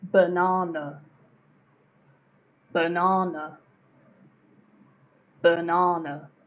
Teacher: Okay, so the unstressed syllables here are b and n. Na is where you put the stress in banana.